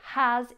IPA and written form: ..əz (has)